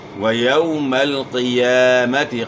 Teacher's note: قاف کو موٹا ادا کرنا ہے. قاف موٹے حروف میں سے ہے اور یا کے اوپر کھڑا زبر ہے، کھڑا زبر الف مدہ کا قائم مقام ہوتا ہے، تو آپ نے اس کو ایک الف کے مقدار کے برابر کھینچنا ہے.